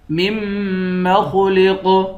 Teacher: میم کو میم کے ساتھ ملا کر میم پر غنہ کریں گے، خا اور قاف کو موٹا پڑھیں گے، قاف پر قلقلہ بھی کریں گے